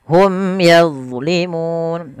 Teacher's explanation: ada bacaan izhar syafai karena bertemu dengan huruf ya harus jelas Suara mimnya